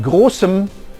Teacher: in the word großem the vowel is dropped altogether